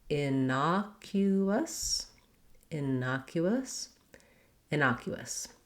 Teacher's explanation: we do have the clear oo vowel there and then we end with a schwa